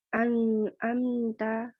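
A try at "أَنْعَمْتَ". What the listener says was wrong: Nun sama mim lebih singkat. Kalau an'amta kepanjangan. Setengah mengalir saja. An'amta.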